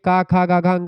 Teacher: जिह्वा जो होती है कंठ ध्वनियों में कंठ को स्पर्श करती है।